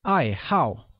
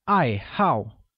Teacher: which is pronounced with a falling tone on both A's